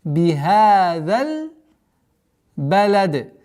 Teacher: так как мы с огласовки фатха переходим на лям, естественно, удлинение при слитном чтении будет аннулировано